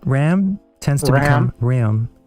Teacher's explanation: There's also the raising of the A sound before N and M. So a would become e.